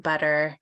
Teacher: It's more common in the middle of the word, and it's actually called a flap, and it's in between a T and a D